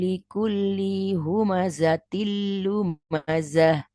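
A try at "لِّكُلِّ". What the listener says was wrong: Oke, likulli linya pendek. Ulang lagi.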